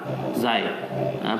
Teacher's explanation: Ni huruf zai tak ada keluar lidah.